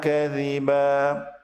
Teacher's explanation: kadziban berubah menjadi kadziba apabila waqaf atau berhenti pada ayat yang kelima ini.